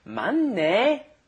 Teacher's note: So the H sound disappears pretty much, and it becomes the double N sound, which is different from a single N in Korean.